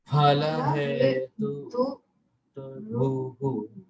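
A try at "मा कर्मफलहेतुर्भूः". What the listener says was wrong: Yes, that's right.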